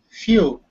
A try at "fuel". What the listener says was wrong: Fuel. Fuel. Yeah, the L. Don't be lazy with the L. You sound like you're from Texas.